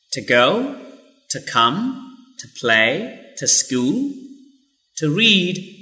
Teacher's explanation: so just pronounce tah when to plus a consonant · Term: weak form